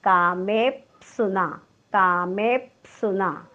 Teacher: प हा ओष्ठ्यवर्ण आहे. पचा उच्चार करताना ओठ एकमेकांना चिकटतात